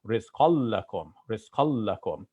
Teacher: assimilating the noon of tanween into the next letter